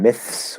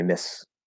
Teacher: And we hear that transition between the TH and the S. You can go straight to an S and drop the TH. That would be the sort of simplified, reduced version.